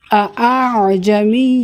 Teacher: لفظ اعجمی کے دوسرے حمزہ کو نرمی سے پڑھیں، اس کو تسہیل کہتے ہیں.